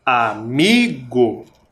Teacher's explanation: vem o a amigo separamos em três sílabas vocês perceberam que a palavra amigo tem uma sílaba que é mais forte você consegue identificar amigo é o mi